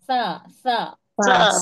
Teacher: زبان کی نوک اور اوپر کے سامنے کے دو دانتوں کے کنارے سے